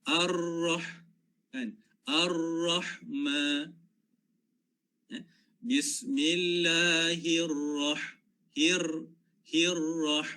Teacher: ulama tajwid kata biasanya sekali ataupun dua kali getaran itu sebutan yang betul